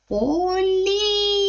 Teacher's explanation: наступний звук ль приголосний м'який